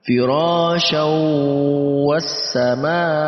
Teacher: Firasyaw, ada tanwin, kita masukkan ke huruf wawu, lalu kita dengungkan. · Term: idgham bi gunnah